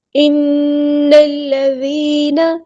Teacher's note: ذال کو باریک نرمی سے ادا کرنا ہے، اوپر والے 2 دانت زبان کے اوپر رکھنے ہیں